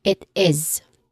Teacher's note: in pronunciation we say it as it is with the buzzing sound. So it's a voiced sound.